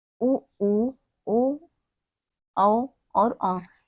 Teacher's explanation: जिन स्वरों के उच्चारण में ओंठ व्रतमुखी या गोलाकार हो जाते हैं